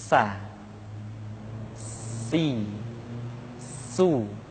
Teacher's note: Di antara sifat yang menonjol ketika kita mengucapkan huruf sa atau huruf sin adalah sifat as-safir, di mana ketika kita mengucapkan huruf sa ada suara tambahan yang menyerupai dengan suara belalang